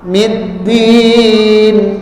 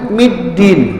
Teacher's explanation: Dal dengan ta itu makhrajnya itu di ujung lidah dan pangkal gigi bagian atas, bukan di langit-langit.